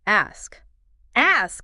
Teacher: Hear that S leading into the K. Yes. Smoothly.